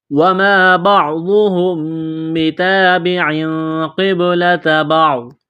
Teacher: میم ساکن کے بعد یہاں پر با ہے، تو یہاں پر اقلاب کریں گے، آواز ناک میں چھپائیں گے